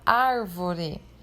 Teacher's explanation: A sílaba ar, que é a primeira ali no caso desta palavra, e a antepenúltima é a mais forte, é acentuada. Então, nós podemos dizer que é uma palavra proparoxítona e é acentuada, assim como todas as outras proparoxítonas.